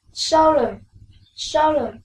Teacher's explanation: The stress is in the first syllable